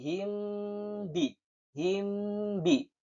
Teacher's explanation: Ikhfa syafawi adalah membaca huruf mim sukun dengan samar dan mendengung sepanjang dua harakat ketika bertemu dengan huruf ba · Mim sukun bertemu dengan huruf ba, maka dibaca samar dan mendengung sepanjang 2 harokat. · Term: ikfa syafawi